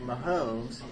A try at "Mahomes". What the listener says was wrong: No, it's Mahomes. There's no L in it.